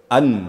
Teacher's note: An betul-betul diangkat lidahnya ke langit-langit. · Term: izhar